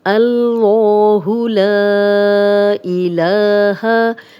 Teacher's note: لام پہ کھڑا زبر ہے، اس کو 2 حرکات لمبا کریں گے، ہا کی زبر کو لمبا ہونے سے بچائیں گے۔ · لا الف مدہ ہے، خالی الف، لام پہ زبر اور آگے حمزہ آ گیا ہے، تو اس کو ہم 3 سے 4 حرکات لمبا کریں گے۔ اوپر مد ڈلی ہوئی ہے، اور حروف مدہ کے بعد جب بھی حمزہ ہو، اب حمزہ یہ ہے کہ الف ہمیشہ خالی ہوتا ہے، جس الف کے اوپر زیر زبر پیش ہو وہ حمزہ ہے، اس کو ہم حروف مدہ کو 3 سے 4 حرکات لمبا کریں گے۔